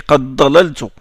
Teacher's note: Warsh, par exemple, il fait l'idgham sur le da quand il est suivi du dad.